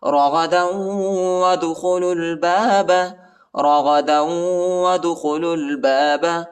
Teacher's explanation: دال کو جھٹکا دینا ہے، حروف قلقلہ کا حرف ہے